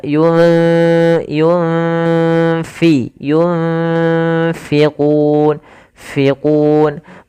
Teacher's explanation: yunfi itu nun mati bertemu fa ada bacaan ikhfa ini usahakan disamarkan nunnya kepada huruf fa. Makhraj fa ada bibir maaf gigi atas menempel dengan bawah ya. · disamarkan sambil ditahan dengan gunah